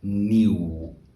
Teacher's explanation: the U here is kind of like mute and combined with the W becomes nieuw.